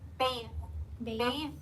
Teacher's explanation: Remember the th it should vibrate.